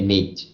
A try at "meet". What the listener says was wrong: meet. avoid pronouncing the T so hard.